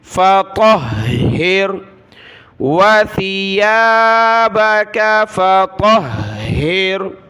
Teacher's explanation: تو کو موٹا پڑھنا ہے اور ہا کو سخت کرنا ہے تشدید کی وجہ سے